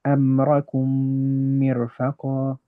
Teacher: So we do 2 harakat of ghunna, and we connect them together. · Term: labial merging